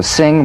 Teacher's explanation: The NG is a voiced, tongue-backed, soft palate nasal consonant.